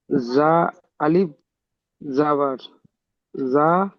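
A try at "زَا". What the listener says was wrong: টান দেন, একালিপ টান হয়নি কিন্তু।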